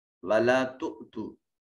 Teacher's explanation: حمزہ ساکن ہے، جھٹکے سے ادا کیا جائے گا